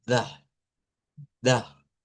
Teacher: debe ser pronunciado en un alemán estándar sin la R, porque es sílaba.